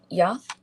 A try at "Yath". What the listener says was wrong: Yath. Excellent.